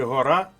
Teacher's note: розміщується над літерою що позначає голосний звук наприклад у слові гора наголос падає на звук а позначений літерою А